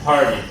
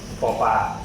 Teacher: when we say it in English, it's aspirated, which means there's a strong blast of air when you say it. So if I say party, I'm exaggerating slightly, but party.